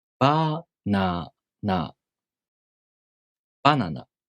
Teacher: the head-high pattern words have an accent on the first mora